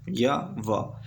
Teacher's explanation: इनका जो उच्चारण होता है ना तो वह पूरी स्वर की तरह होता है और ना ही व्यंजन की तरह होता है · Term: अर्धस्वर